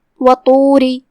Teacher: را کو زیر سے پڑھیں گے اور اسے ہلکی آواز میں بھی پڑھیں گے کیونکہ یہاں حکم ہے ترقیق.